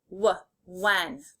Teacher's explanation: The WH makes a W sound. The H is kind of silent.